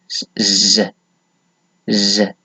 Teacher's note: the sound creates sort of vibration in your larynx and pharynx, then that sound is voiced, like z, z.